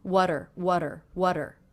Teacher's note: I'm making that a flap T sound, which sounds like the D between vowels